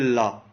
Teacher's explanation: हवा जो होती है हमारी जीभ के बगल से निकलती है, दोनों साइड से बगल से। आप जिसे करिए ला, तो उसमें ऐसा लगता है कि बगल से हवा निकल रही है, तो इसलिए इसको पार्श्विक में रखा गया है।